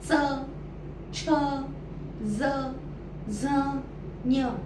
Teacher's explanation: त्याचा उच्चार हा जिभेचा स्पर्श वरच्या दातांच्या मागे होतो इथे the tongue touches the back side of the अपपर teeth